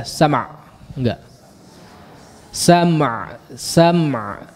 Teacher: Mimnya jangan terlalu singkat ya.